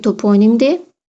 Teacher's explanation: Tərkibindəki saitlərdən birincisi o qalın, ikincisi o qalın, üçüncüsü i incə. Və sözün kökündəki üçüncü sait ahəng qanunu pozur.